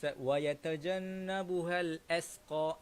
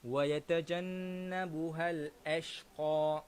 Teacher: Kadang-kadang tuan-puan, kita baca huruf shin ini dengan huruf sin.